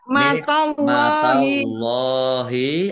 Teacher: Allahnya dibaca tebal karena harakat di depannya fathah. Lam fathah berdiri mad thobi panjang dua harakat.